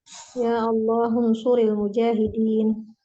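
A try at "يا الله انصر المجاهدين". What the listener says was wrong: Ya Allahun. Nggak dibacakan hamzah wasalnya ya. Ya Allahun. Hun suril mujahid.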